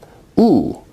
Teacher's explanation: oo is a high back rounded vowel